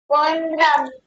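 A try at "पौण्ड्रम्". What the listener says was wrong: पोंड्रम नहीं पंड्रम औ पंड्रम ऐसा बोलिए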